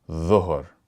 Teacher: the letter dha sounds like a heavy version of dh, similar to the first 2 letters of the.